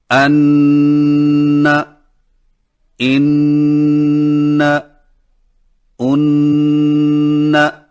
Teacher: نون مشدد کو ادا کرتے وقت زبان کے اگلے کنارے کو اوپر کے مسوڑوں پر مضبوطی سے لگاتے ہوئے غنہ کریں